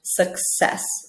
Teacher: We hear a KS sound, like an accent, that double C, accent, success, okay?